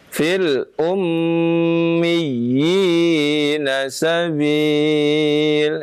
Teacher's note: Tasydid ya, mimnya tasydid itu ditahan ya.